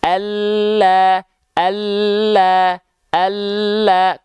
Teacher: Huruf lam itu dilafalkan dari tepi atau pinggir lidah bagian depan yang kanan dan pinggir lidah depan bagian yang kiri, ya, menyusur keduanya sampai ke ujung lidah, disentuhkan ke arah langit-langit.